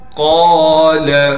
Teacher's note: قاف کو ایک الف کی مقدار کھینچنا ہے اور قاف کو موٹا کر کے پڑھیں گے، لام کو بالکل نہیں کھینچیں گے.